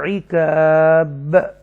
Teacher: جب وقف کریں گے با ساکنہ کو، با کسرہ کو، تو با ساکنہ ہو جائے گا